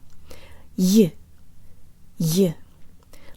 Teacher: the y sound remains very strong and does not get absorbed by previous consonants, and it's followed by a y-flavored schwa.